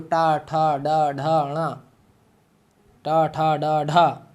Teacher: ये जिह्वा दांत को छूती है, जिह्वा मूर्धा को छुएगी